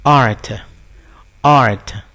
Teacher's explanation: มีรเรือการันออกเสียงเป็นออไม่ใช่Rนะฮะ